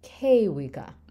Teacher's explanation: you stress that first syllable because the root is kewi